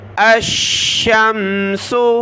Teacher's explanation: حمزہ کو شین کے ساتھ ملایا، شین کو میم کے ساتھ. الشمس، شین کو سخت کیا تشدید کی وجہ سے